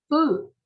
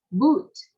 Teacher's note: Food là chữ U kéo dài có 2 chấm.